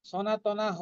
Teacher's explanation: সনাতনাঃ, না দুটোই দীর্ঘ হবে, যেহেতু শেষে না আছে বিসর্গটা হা উচ্চারণ হবে। আমরা কিন্তু ওটাকে হ বলবো না, সনাতনা হ বলবো না, সনাতনা হা বলবো।